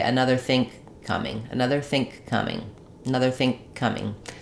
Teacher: we stop that think, we don't release it, and we just release it onto the k of coming. So it's hard to hear the difference.